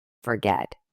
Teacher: Forget with stress on the get syllable